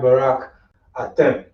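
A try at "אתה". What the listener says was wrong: And remember, there's no E sound in Hebrew. There's no E.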